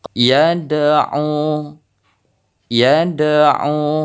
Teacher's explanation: Contoh yang kedua, yad'u, yad'u, harus terdengar pantulan dari huruf dal ini. Nah, karena ini qalqalaf sughra, jadi pantulannya tidak terlalu besar, hanya kecil saja.